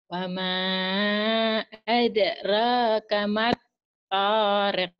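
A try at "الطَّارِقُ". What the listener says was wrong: Tariq, bukan torek. Torek kalau orang Sunda mah torek enggak bisa dengar. Tariq. Tariq, jalannya Tariq. Tariqoh, jalan. Wama adraka mattariq. Tariq. Jabal Tariq. Tariq. Bukan Tariq. Tariq mah. Kalau Tariq orang Sunda bilang gak bisa dengar tuh tuli Tariq. Tariq. Rik. Ah, jangan arek. Ari. Tariq. Kalau arek. Kalau arek Surabaya, iya arek. Ari, jangan arek. Ari. Matorik.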